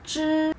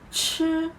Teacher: When you say 知, there is no air out of your mouth. And when you pronounce 吃, you can feel there is a strong air coming out of your mouth.